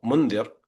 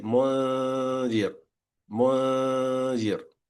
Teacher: So instead of mundir, you say mundir, mundir, right? So the only thing you did differently is you made that ghunna, the nasal part, slightly longer. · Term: lengthening of the ghunna